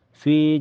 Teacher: harakat kasrah di fi dibaca panjang dua harakat